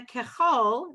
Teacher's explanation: that's what we call a kamatz katan, even though it's an ah vowel, it says oh